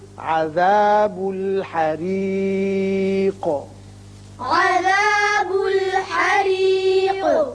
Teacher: یہ را باریک ہوگا اس لیے کہ نیچے کسرہ ہے اور قاف ساکن کر رہے ہیں لہذا اس کی صفت قلقلہ ادا کریں گے